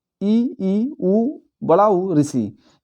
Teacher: जिन स्वरों के उच्चारण में मुख सबसे कम खुलता है अर्थात लगभग जैसे बंद रहता है तो उसे बोलते हैं समृत स्वर।